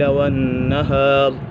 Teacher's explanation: والنہار نون مشدد ہے، نون مشدد میں ہمیشہ گنہ ہوتا ہے